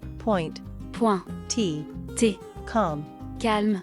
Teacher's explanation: no aspiration of P, T and K